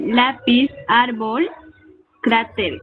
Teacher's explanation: Lleva el acento en la penúltima sílaba. Se les marca tilde cuando terminan en consonantes diferentes. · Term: Palabras graves